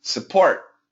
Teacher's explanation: make the uh stress on the second syllable